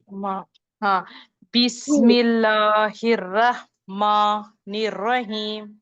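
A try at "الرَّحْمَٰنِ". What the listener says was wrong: अभी भी मोटा है।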